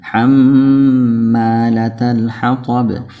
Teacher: হাম গুন্না হবে মিম আর নুনের মধ্যে তাসদীদ থাকলে ওয়াজিব গুন্না